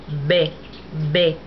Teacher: when you make a B, you shouldn't feel any breath on your hand. If you hold your hand up, B, B.